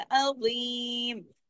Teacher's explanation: तो ये ज़ीम जो है ये है मोटा पढ़ा जाएगा